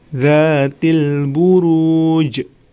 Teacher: huruf Qalqalah Nya maka cara membacanya harus di pantulkan